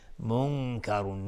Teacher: منکرون نون ساکن بهش کاف اخفای حقیقی